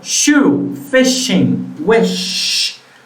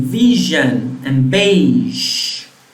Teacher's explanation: Sh and j are the same sound except for the vocal folds.